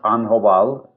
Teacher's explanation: it was called kobal with a glottal stop